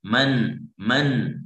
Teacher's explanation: Ya, ketika kita membaca misalkan man, nah itu ada terasa di khasyum seperti ada gunnah atau dengungnya. Itulah yang sedikit, itulah yang dimaksud. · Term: gunnah asli